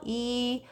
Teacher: 발음을 할 때 처음과 마지막에 입의 모양이 바뀌지 않아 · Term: 단모음